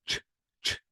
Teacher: If you want to say ch, ch, absolutely there will be no vibration.